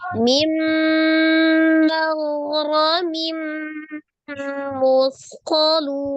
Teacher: Ro-nya fathah dibaca dengan tebal. Mim tanwin bertemu dengan huruf mim idgham bi gunnah.